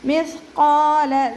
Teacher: ഖാഫ് ഇസ്തിഅലാൻ്റെ ലെറ്ററാണ്. അപ്പോൾ നല്ലോണം തഫ്ഹീം ചെയ്തിട്ട് ഉച്ചരിക്കുക.